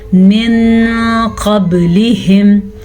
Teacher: نون ساکن کے بعد قاف حروف اخفاء میں سے ہے تو نون کو آپ نے چھپا کے پڑھنا ہے، چھپے غننے کے ساتھ پڑھنا ہے